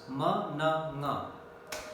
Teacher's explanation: The velum or the soft palate comes down so that the nasal passage is open and the air continuously comes out through nasal passage. They are called nasal sounds.